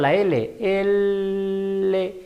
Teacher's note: es la única qué más tenemos consonante lateral consonante laterales laterales lateral quiere decir que el aire sale por ambos lados de la lengua